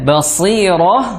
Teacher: Shad ketika kasrah dia tetap tebal